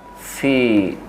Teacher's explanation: Fi-nya itu adalah mad tabi'i, huruf fa yang berbaris kasroh berhadapan dengan ya mati, maka fi itu dibaca panjang sampai 2 harokat